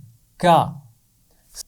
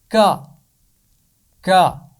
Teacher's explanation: زبان کی جڑ بالکل آخر میں ہم اوپر تالو سے ملا کر اس کی آواز ادا کرتے ہیں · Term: کاف